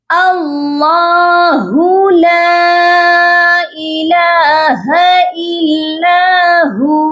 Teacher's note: سب سے پہلے اللہ کے لام کے اوپر کھڑی زبر ہے، اس کو ہم نے ایک الف کے برابر لمبا کر کے پڑھنا ہے اور اللہ کے لام کو موٹا کر کے پڑھا جائے گا، اور اللہ کے ہو کو ہو نہیں پڑھا جائے گا، اللہ ہو ایسے بالکل نہیں پڑھنا۔